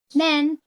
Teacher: in man, the vowel A becomes slightly nasalized because of the nasal consonant N. This is an example of oronasal sounds where the air escapes both through the mouth and the nose.